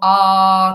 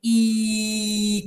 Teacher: no es lo mismo A que tengo la lengua abajo a que I que la tengo que poner casi en el paladar la lengua interviene interviene es el principal órgano fonador de todos